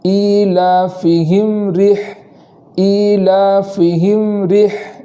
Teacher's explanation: میم ساکن کو اس طریقے سے ادا کریں کہ اس کے اوپر زبر نہ ہو جائے۔ اس طریقے سے ایلافہم رح، فہم رح ایسا نہ ہو، بلکہ میم کا سکون، میم کا جزم اچھے سے ادا ہو، اس طریقے سے پڑھیں گے ایلافہم رح، ایلافہم رح اس طریقے سے پڑھیں گے۔